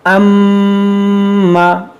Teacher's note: इस तरह नाक में आवाज़ ले जाकर एक अलिफ के बराबर खींचने को गुन्ना कहते हैं